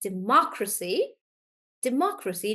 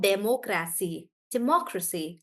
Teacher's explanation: in democracy we are stressing on more and that's why we say it like democracy democracy not democracy